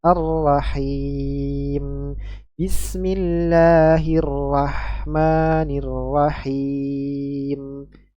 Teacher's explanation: Yang setelahnya adalah huruf ya mad dan setelahnya adalah huruf mim berharokat yang disukunkan. Dibaca panjang 2, 4 atau 6 harokat. Kita baca 4 harokat.